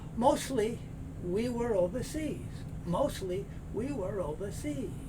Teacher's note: very often this t sound is not made in this word you'll hear mostly not mostly mostly here you have this hard